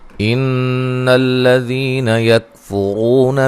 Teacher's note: نون مشدد پہ غنہ ضروری ہے